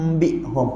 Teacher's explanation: saya baca dengan bibir saya rapat dan tekan. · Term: Iqlab